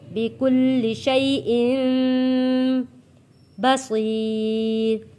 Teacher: نون ساکن اور تنوین کے بعد جب حرف با آتا ہے تو ہم اس کو میم میں بدل کر پڑھتے ہیں۔